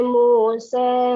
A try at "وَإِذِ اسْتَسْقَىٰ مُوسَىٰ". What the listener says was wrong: Eja sikit imalah, condongkan lagi. Wa idh istasqi Musa. Musa.